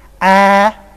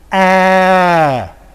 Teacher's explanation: let's first of all produce cardinal 4, and then I will round my lips. Number 4 is A, and A with rounded lips. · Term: cardinal vowel number 12